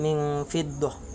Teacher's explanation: apabila nun sukun bertemu dengan huruf fa, maka cara membacanya samar-samar tanpa dengung